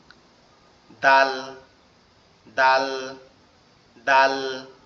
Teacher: দালটা হবে জিহ্বার আগা সামনে দুই দাঁতের গোড়ার সঙ্গে